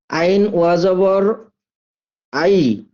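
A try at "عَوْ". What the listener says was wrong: আই না। যখন ওয়াও থাকবে তখন হর্ষ উ হবে। এটা মনে রাখতে হবে। ওয়াও থাকলে হর্ষ উ। মানে আইন ওয়াও যাবার আউ জি। আর ইয়া থাকলে হর্ষ ই। আইন ইয়া যাবার আইন ওয়াও যাবার আউ।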